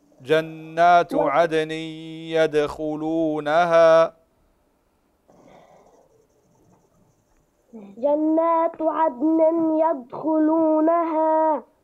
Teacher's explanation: قلقل الدال في عدن ويدخلونها